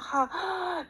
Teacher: 목에서 마찰음이 나오는 거구나 보시면 되겠습니다